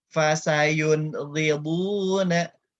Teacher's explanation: Samping lidah. Huruf gha di tenggorokan bagian atas, kemudian huruf bo sisi lidah, samping lidah bertemu dengan gigi geraham atas.